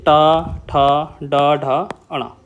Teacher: ऐसे शब्द जिसमें हमारी जीभ जो है वो लौट जाती है। बिल्कुल लौट जाती है। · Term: मूर्धन्य, मूर्धन्य व्यंजन